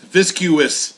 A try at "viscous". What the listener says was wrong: Viscous. You don't say viscuosity. It's viscosity. It's viscous.